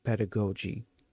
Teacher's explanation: The stress is always on the first syllable, PEH. 2. The middle, the da, is a very quick neutral sound, the schwa slash a, almost like d. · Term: Emphasis